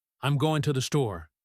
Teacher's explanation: If you are listening for going to, you might miss it because it sounds like gonna. But if you are listening for the rhythm, you hear the stress on store.